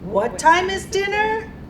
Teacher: it's a clarification question the tone stays up